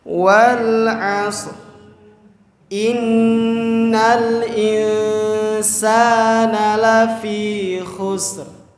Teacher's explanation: nun bertemu dengan huruf sin atau sama-sama huruf ikhfa, sehingga dibacanya itu disamarkan